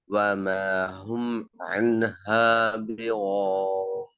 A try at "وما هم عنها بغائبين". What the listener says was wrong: عنها அல்ல. وما هم عنها என்று வரக்கூடாது. عنها عنها அந்த இடத்துல கலக்காம வரும். கலக்கினா பிள்ளை.